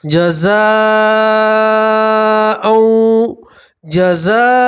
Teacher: یہاں مد متصل ہے، حرف مد کے بعد حمزہ ساتھ میں ملا ہوا ہے تو آپ یہاں 4 الف کے برابر کھینچیں گے